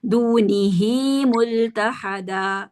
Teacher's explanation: یہ صلہ صغریٰ ہے، ان کے 2 کاؤنٹس کو لمبا کریں گے، یا مدہ کے برابر اس کو لمبا کریں گے، دونی ہی ملتحدا، ٹھیک ہے؟